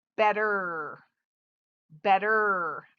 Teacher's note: we don't hear that e at all it doesn't say e it says er the first e says e